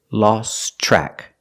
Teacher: the T in lost is silent because it's between consonants.